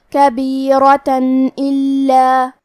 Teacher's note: الف حروف الاظہار میں سے ہے اور اظہار کا معنی ہے ظاہر کرنا، اور کیونکہ تنوین کی اصلیت نون ساکن ہے تو ہم یہاں تنوین ظاہر کریں گے اور اسے نون ساکن پڑھیں گے اور بغیر غنہ سے یہ حکم کو ادا کریں گے